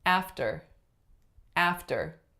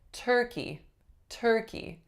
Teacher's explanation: you're gonna hear not nearly as much aspiration as if I said turkey